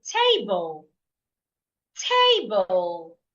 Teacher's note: So in the word table, I need to say the first part louder, longer, and clearer.